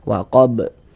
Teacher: Sebab kita matikan karena berwakaf, maka dia mantul waqab. Dan ini dia masuk kepada qalqalah kubra. Karena kita berwaqaf atau berhenti di huruf qalqalah.